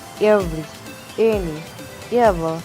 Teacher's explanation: The three-term descriptions of this sound: closed mid-front unrounded vowel.